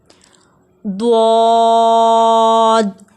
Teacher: حرف حافیہ ایک ہی ہے جو زبان کے بغلی کنارے سے ادا ہوتا ہے